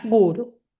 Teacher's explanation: vamos a llevarle la intensidad a la primer sílaba